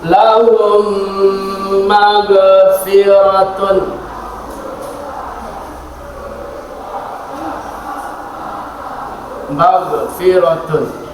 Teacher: Cara membacanya adalah memasukkan atau dengan cara melebur. Apabila huruf mim bertemu dengan mim maka bacaannya dibaca dengan mendengung atau melebur. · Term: idgham mimi